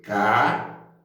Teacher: A sílaba tônica, nesse caso, é a sílaba der, né? É a sílaba der, que é a sílaba tônica aí da palavra caderno.